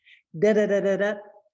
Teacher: I touch the tip of the tongue right behind the gum ridge, and I do it quickly. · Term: flap sound